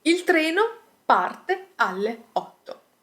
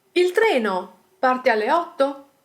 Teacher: The structure is exactly the same, but there is a rising intonation in the end. And this is enough to make people understand that we are actually asking a question.